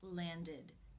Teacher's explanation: in this case the ending is pronounced with the EH as in sit vowel and the D sound